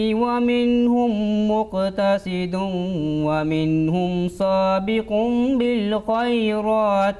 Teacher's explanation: there is a tanween and waw without a shadda sign, but you have applied that shadda because you are joining together. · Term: assimilation with nasal sound